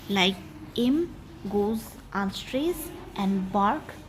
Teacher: And in case of the word embark, we give the stress to the second syllable, like em goes unstressed and bark goes stressed